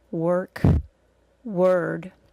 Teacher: a schwa plus R really just sounds like an R sound that takes more time to say. We really don't hear any vowel sound before it.